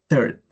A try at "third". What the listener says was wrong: No es third, con I, es como con una E, ¿sí?